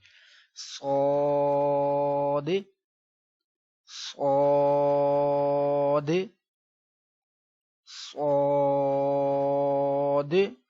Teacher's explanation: صاد موٹی آواز میں پڑھنا ہے، اور آپ نے اس کو پڑھتے ہوئے اپنے ہونٹ نہیں گول ہونے دینے،